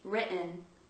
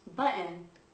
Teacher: if there is a double T, the T might actually be glottalized in American.